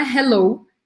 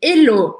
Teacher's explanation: não é Hello em inglês é Helô sem pronunciar o h